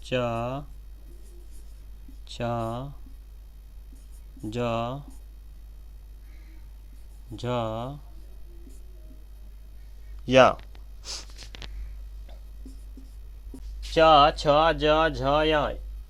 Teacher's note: दूसरा वर्ग है ख वर्ग, सॉरी च वर्ग। इसकी आवाज़ जो निकलती है तालु से निकलती है, च, तालु से।